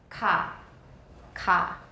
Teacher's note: sounds are made with the back of the tongue and the soft palate the consonants that have the place of articulation farthest back in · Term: velar